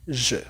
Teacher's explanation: la E con la U lo vamos a leer como una E con la boca cerrada en francés.